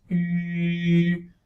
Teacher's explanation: It is the glide equivalent, or the consonantal equivalent to vowel U, which is like place your tongue as though you were going to pronounce I, like E sound, but then your lips are rounded like for a U